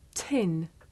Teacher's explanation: the puff of air at the beginning of tin makes the paper move